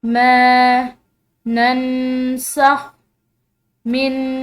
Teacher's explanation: यहाँ पर नून साकिन है और उसके बाद सीन है जो कि हरूफ इख्फा में से है, तो यहाँ पर हमने इख्फा करना है नून साकिन का